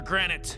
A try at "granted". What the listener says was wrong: Are you saying granite? It's granted with a D.